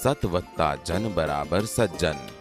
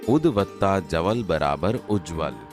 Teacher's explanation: ત વર્ગના વ્યંજનને બદલે તેને મળતો ચ વર્ગનો વ્યંજન આવે. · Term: વ્યંજન સંધિ